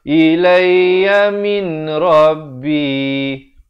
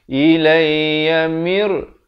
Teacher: Di sini kita jumpa pertama kali hari ini hukum idgham bila gunnah. Masuk tanpa dengung.